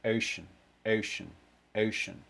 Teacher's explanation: really strong neutralization of the first half of that diphthong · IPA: o̜ʊ